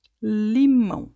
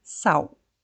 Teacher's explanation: nós fazemos o l no começo tocando também a ponta da língua atrás dos dentes superiores